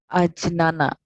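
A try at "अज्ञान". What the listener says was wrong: Agyana. G. Instead of J, you must pronounce G.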